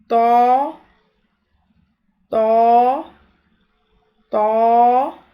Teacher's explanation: تو اور تا کی ادائیگی میں ہونٹ پھیلتے ہیں، تو کی ادائیگی میں تالو کی طرف زبان بلند ہوتی ہے پچھلا حصہ، تو تو کی ادائیگی پور ہو جاتی ہے